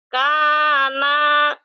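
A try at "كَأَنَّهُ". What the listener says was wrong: panjang, nanya pendek.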